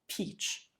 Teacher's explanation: But when I say peach, you can hear this kind of the air that I let out of my mouth. Peach. It's stronger, it's more plosive. It's like a little explosion in the mouth. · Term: aspiration